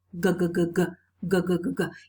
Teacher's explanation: noun googa googa googa googa if you touch your throat go there is vibration of the vocal cords so this sound is voiced